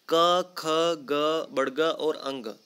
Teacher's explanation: इन 5 ध्वनियों का जब आप उच्चारण करेंगे तो जो हवा है, हवा में अवरोध कहाँ उत्पन्न होगा? हमारे कंठ में। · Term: कंठीय ध्वनियाँ